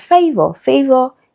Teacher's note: it has the diphthong a and then the schwa sound